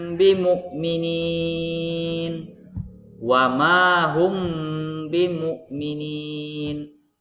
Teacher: dengan huruf ba ya mim mati bertemu dan rubah maka dibaca menyamarkan atau menyembunyikan bunyi huruf mim sukun pada kedua bibir dengan berdengung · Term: Ikhfa Syafawi, ikhfa safawi